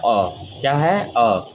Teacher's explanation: मध्य स्वर में, तो इन स्वरों के उच्चारण में जीभ का जो मध्य भाग होता है वो कार्य करता है